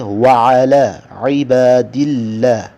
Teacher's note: اللہ کو باریک پڑھیں گے، ہاں اللہ سے پہلے زیر آئی ہے